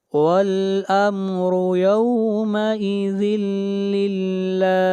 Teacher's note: میں سے لام ہے، یہاں پر ادغام بلا غنہ ہوگا اور لفظ اللہ کو یہاں پر باریک پڑھا جائے گا، اس لیے کہ لفظ اللہ سے پہلے زیر ہے